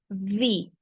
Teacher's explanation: this V is pronounced with your upper teeth and lower lip